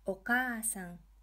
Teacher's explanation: Here we are extending the ka syllable. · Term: long vowels